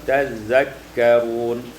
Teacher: tazakkaruna tasydiduz zal, ditasydidkan zal, tazakkarun.